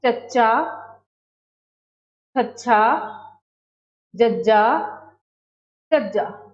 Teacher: जिवें चच्चा, छच्छा, जज्जा, झज्जा। इन्हां नूं उचारण समय साडी जिहड़ी जीभ है वो तालू नाल छूंदी है, इसलिए इन्हां नूं तालवी धुनियां कहते हैं।